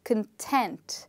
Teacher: we stress on the second part and that's why we say content, because the first part becomes much softer